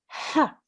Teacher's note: Okay, in this example here, our maftu letter, the letter with a fatha, is the ha. Remember, from the middle of the throat